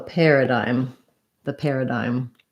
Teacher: First syllable stress, we have the air vowel. So AR says the air sound. So this PAR is just like the same as a pair of shoes.